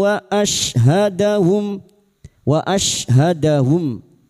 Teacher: shin sukun huruf shin wastul lisan atau tengah lidah